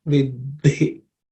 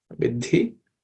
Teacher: the second letter in that compound consonant is aspirated, so it should be pronounced vidhi. Okay, it should end with an aspiration.